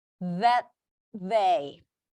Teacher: Even though it's a t, I place it on my teeth because I'm preparing for the next th. We always want to anticipate the next sound that they.